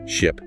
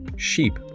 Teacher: ship. That's a short I sound like in sit versus sheep. A long e sound like in se.